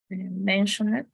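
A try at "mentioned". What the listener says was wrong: But remember, if you say mention it, it's like the N is very strong. But remember, the only way in which we read it is going to be with a T or a D, right? When the last consonant is a D or a T.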